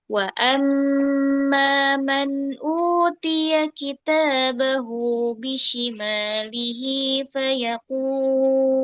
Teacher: pertama wa amma itu tahan dulu mim tasdidnya. Kemudian ketika bertemu madu thabi'i mad silaqir panjangkan jangan terburu-buru.